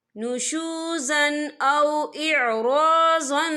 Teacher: تنوین کی آواز کو ناک میں چھپائیں گے۔ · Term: اکفا